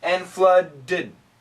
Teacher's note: It's a schwa, it's an id. We have to add the id.